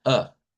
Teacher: si quiero el acento, digamos, de alemán estándar, entonces debo de pronunciarla con una A centralizada